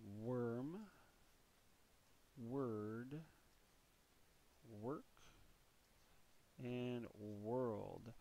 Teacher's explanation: when you have a w in front of the or then you're getting into the uh schwa sound